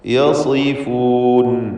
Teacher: സ്വാദിന് കസ്റാണ്, കുറഞ്ഞ തഫ്ഖീം കൊടുക്കുക.